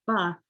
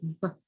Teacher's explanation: not adding the sound, the schwa sound to the end of my letters, but modeling how I clip that sound. So instead of saying ba, I say b.